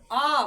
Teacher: वह स्वर जिसके उच्चारण में मुख पूरा खुला रहता है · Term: विवृत स्वर